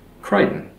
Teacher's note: notice how that guttural ch, the ch, isn't pronounced anymore in the name